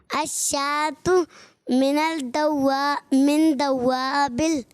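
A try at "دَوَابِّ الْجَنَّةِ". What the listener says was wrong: باپ پہ لیکن تشدید ہے.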